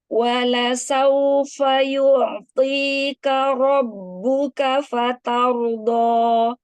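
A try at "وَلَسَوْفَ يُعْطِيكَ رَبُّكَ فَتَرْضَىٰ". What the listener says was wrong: Bagus. Tapi kafnya jangan ikut tebal.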